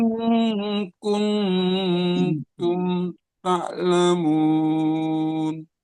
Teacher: Ingnya memang dah samar karena ikhfa.